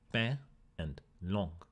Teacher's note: in french the n was lost but not its nasality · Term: nasalized